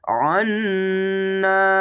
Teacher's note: এখানে ওয়াজিব গুণনা, গুণনাগুলি অবশ্যই গুনগুন করে হবে। আন্না, এভাবে গুণনাগুলি হবে।